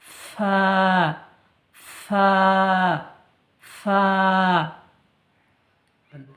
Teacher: ফা উপরের দাঁত নিচের ঠোঁটে লাগিয়ে উচ্চারিত হয়